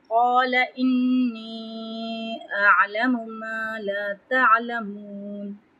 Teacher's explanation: قَالَ إِنِّي أَعْلَمُ مَا لَا تَعْلَمُونَ قاف پہ تفخیم کریں گے، لمبا کریں گے۔ انی حمزہ کو جلدی پڑھیں گے اور نون سے ملاتے ہوئے غنہ کریں گے 1 الف برابر، اور نی یعنی لمبا کریں گے، یہاں پہ یا مد آ رہا ہے، اس کے ساتھ یہاں پہ مد بھی آ رہی ہے تو اس کو 2 سے 3 حرکت لمبا کریں گے۔